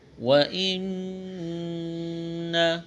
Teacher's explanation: نون مشدد ہے، آواز ناک میں چھپائیں گے، غنہ کریں گے